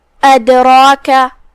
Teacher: جو کہ را پہ زبر ہے تو را کا حکم ہے تفخیم، ہم اسے بھاری آواز میں پڑھیں گے